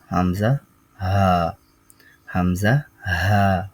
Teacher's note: মাখরাজ 17 টি তাহলে 17 টি মাখরাজের প্রথম মাখরাজ আমরা পড়ছি এক নাম্বার মাখরাজ হলকের শুরু হতে